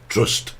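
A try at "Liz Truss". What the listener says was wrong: No, there's no T. in trust. it's not Trust.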